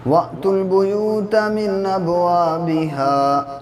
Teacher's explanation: حمزہ ساکنہ کو جھٹکے کے ساتھ پڑھتے ہیں۔ حمزہ کبھی الف کی شکل میں، کبھی واو کی اور کبھی یا کی شکل میں ہوتا ہے، تو یہاں پہ الف کی شکل میں ہے اس لیے یہاں پہ جھٹکا ہوگا۔